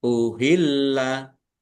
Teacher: lam tasdid dibaca dobel ada ya ditekan dan ditahan biar tampak dobelnya.